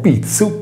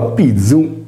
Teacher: La consonante Z esprime un suono sordo, TS, e non sonoro, DZ.